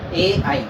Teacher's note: ए आई का उच्चारण स्थान कंठ और तालु होगा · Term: कंठ तालवीय